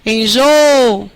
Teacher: A sílaba tônica é o jô.